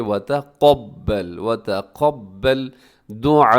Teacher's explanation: وتقبل میں قاف موٹا رکھیے، وتقبل نہیں پڑھنا بلکہ وتقبل دعاء.